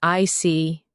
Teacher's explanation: When you show understanding with I see, your tone drops slightly to show calmness